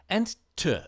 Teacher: the voiceless alveolar plosive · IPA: [t]